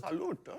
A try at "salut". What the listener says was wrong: Salute sounds a bit more hard. Salut.